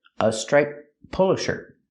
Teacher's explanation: blue jeans a striped polo shirt we hear striped polo shirt the T sound in striped is between consonants so you don't really hear it